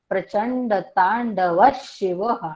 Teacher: व च्या विसर्गाच्या पुढे श आलंय शहामृगाचं, म्हणून त्या विसर्गाचा उच्चार आपला श कडे जाणारा असणार आहे